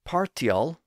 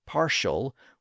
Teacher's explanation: partial with its T sound became partial with its modern sh sound